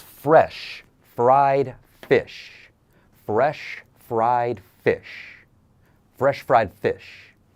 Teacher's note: The letter F is unvoiced or silent. So it's similar to TH. You just breathe.